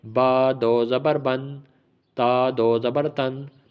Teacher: تنوین پڑھتے ہوئے ناک میں آواز چلی جاتی ہے